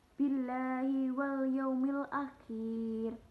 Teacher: tarkik atau tipis karena lafaz Allah di sini didahului oleh kasroh